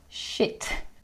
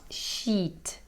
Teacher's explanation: It's a very short sound, shit. It's not sheet.